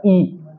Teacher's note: ई कहां से बोला जाता है? ई। जीभ किसके पास जा रही है? तालू के पास।